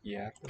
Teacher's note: The simplification of that cluster. And the G is not really heard. And it's the same thing with the final T. So at both ends of this, it's lost a sound.